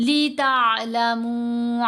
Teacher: लितअलमू, बहुत से लोग इसको पढ़ेंगे लितअलमू, तो वो फिर हमज़ा साकिन की आवाज़ बन जाएगी जब झटका दिया जाएगा। आइन साकिन को पढ़ते हुए झटका नहीं देना। لہر کی طرح ایسے اسموتھ آواز جائے گی گلے میں.